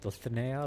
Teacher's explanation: But the my understanding is that when you heard him say Dulcinea, it was a little bit like Dulcinea, like or Dulcinea or something like that. Like it's like a little bit aspirated, a little bit of a lisp on it